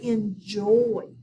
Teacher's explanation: we actually say the last syllable a little harder we stress it a little harder